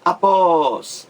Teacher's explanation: oxítona a sílaba mais forte a última